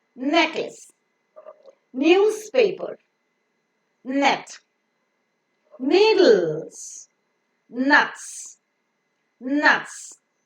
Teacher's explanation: Take the tip of your tongue, make it touch with the teeth ridge, and see that the oral cavity is blocked. The soft palate is lowered, so the air goes through the nose. · The air coming out from the lungs has to pass through the nose, and hence the soft palate is lowered. In order to block the oral cavity for the pronunciation of N, you could find the tip of the tongue making a contact with the teeth ridge. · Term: nasal, nasal sound